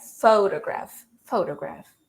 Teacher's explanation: So the stress syllable is the pho, all right?